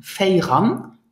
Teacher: So we reduce the feja to fei, and then we have ran.